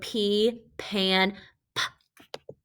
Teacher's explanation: notice that i cut it off before i added an uh